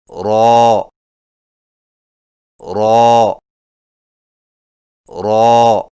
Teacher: را کی ادائیگی میں زبان کی نوک کی پشت کو اوپر والے دانتوں کے مسوڑوں سے لگا کر موٹی آواز میں پڑھیں، یعنی را را را۔